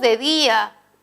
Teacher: Día encontramos una vocal cerrada, una vocal abierta y la que suena más es la cerrada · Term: hiato acentual